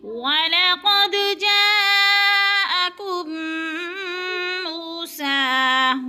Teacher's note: وَلَقَدْ پہ قلقلہ ہو رہا ہے، دال کو ہلا کر پڑھنا ہے